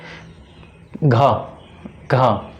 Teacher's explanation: घ दोस्तों कंठ से ये उच्चारण हो रहा है इसका